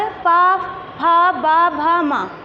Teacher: दोनों लिप्स जो हैं आपस में टच कर रहे हैं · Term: ओष्ठ